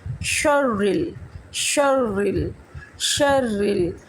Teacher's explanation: شر را کو باریک پڑھیں گے، را کے نیچے زیر ہے